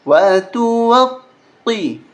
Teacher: قاف پہلے سے ہی موٹا پڑھا جاتا ہے پھر اس کے اوپر تشدید ہے تو اس کو سختی کے ساتھ پڑھیں گے